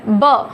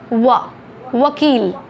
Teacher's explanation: जब हम ब बोलते हैं तो अपर लिप और लोअर लिप टच होता है ब, और जब हम व बोलते हैं तो व बोलते वक्त वी शेप में हमारे लिप का शेप होता है